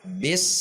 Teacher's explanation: sin huruf yang mengalir sehingga tidak dihentak, tidak memantul. Contoh yang dihentak adalah bis langsung berhenti. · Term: sin sukun